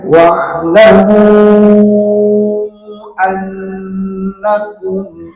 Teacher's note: Ada huruf nun yang bertasydid, maka harus didengungkan selama 2 harakat, ya. Dihukuminya adalah gunnah.